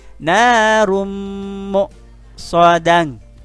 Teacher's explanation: Nah, bunyi rumnya masukkan ke mem, tahan sebentar ya. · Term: idgham bi gunnah